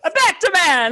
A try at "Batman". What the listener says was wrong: You added an extra syllable.